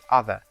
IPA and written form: ʌðə (other)